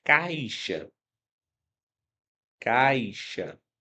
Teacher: o meu som saiu do a, que é sempre uma vogal, e foi pro som mais fraco, que é a semivogal · Eu quero que você perceba, eu quero que você perceba que caixa é, apresenta aqui, apresenta aqui uma vogal, que é o A, caixa. O I tem um som mais fraquinho, é uma semivogal.